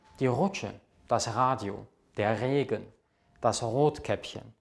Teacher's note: Das R wird im Deutschen normalerweise aus dem Hals gesprochen.